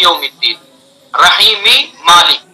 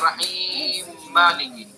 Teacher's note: رحیم میں میم اور اس کے بعد دوسرا میم، تو ایک حرف مکرر آ گیا، پہلا بھی متحرک دوسرا متحرک، تو پہلے کا دوسرے میں ادغام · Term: ادغام کبیر